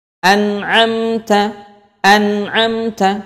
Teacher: harus diizharkan dibaca jelas nunnya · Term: izhar halqi